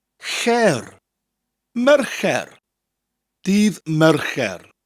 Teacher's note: Mer, and then it sounds like the word care, but with a CH sound to start, che, and a rolling R at the end.